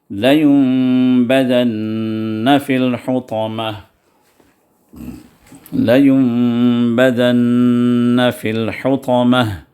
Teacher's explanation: نون ساکنہ کے بعد با آیا، تو جو ہے وہ نون جو ہے میم میں تبدیل ہو جائے، اس کو اقلاب کہتے ہیں، حرف اقلاب۔